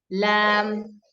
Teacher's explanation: ലാം എന്ന് പറയുമ്പോൾ നമ്മൾ വിചാരിക്കും ലാം എങ്ങനെയാ വന്നത്. ലാം അറബിക് ലാമില് നമ്മുടെ നാവിന്റെ ഫുൾ സൈഡ് നമ്മൾ യൂസ് ചെയ്യുന്നുണ്ട് ആക്ച്വലി